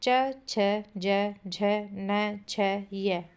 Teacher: च छ ज झ न छ य दोबारा च छ ज झ न छ य ये याद रखने हैं आपको। ये तालु से बोले जाते हैं। तालव्य व्यंजन कहलाते हैं।